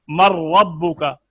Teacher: نون کو را میں ملایا تھا غنہ نہیں ہے، تو یہ ادغام تام ہے.